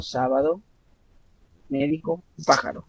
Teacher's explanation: la sílaba tónica la lleva en la antepenúltima sílaba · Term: esdrújulas